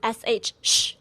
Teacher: It's sort of in between the English sounds s and sh but closer to shh. All right. The key to saying shh correctly is to make sure the middle part of your tongue is pressed up against the roof of your mouth.